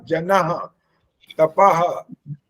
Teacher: तपः ठीक है ये जब ह की आवाज आती है तो ह के बाद भी ह की आवाज चाहिए लेकिन वो ह पूरा नहीं होता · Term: विसर्ग